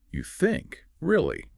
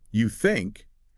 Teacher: if the narrator uses a falling, stressed tone on the word think, it conveys sarcasm, doubt, or skepticism.